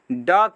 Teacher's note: तो ड का उच्चारण स्थान जो होता है वो होता है मूर्धा।